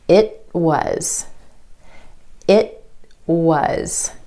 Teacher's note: For the held T, you just skip step three. You hold the tip of your tongue against the ridge behind your top front teeth and you don't release any air. · The tongue goes up for the t at the end of the word. It holds there and then straight into the W sound for was.